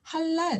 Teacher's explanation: 라메드는 바로 앞에 있는 모음, 앞에 있는 음절에도 영향을 미치기 때문에 하랄이 아니라 할랄 하고 영어처럼 앞뒤의 발음에 영향을 주면서 읽습니다